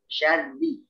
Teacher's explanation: Jadi rahangnya itu lebih tipis ya, karena seperti kita mengucapkan kasroh atau bunyi i ya, tipis ya. Vokalnya ke bawah.